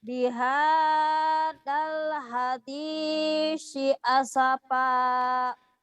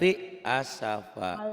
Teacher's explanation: Bihadal hadisi, sa-nya ujung lidah ya.